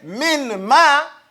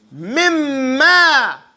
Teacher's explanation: And the noon sound gets eaten up. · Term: idgham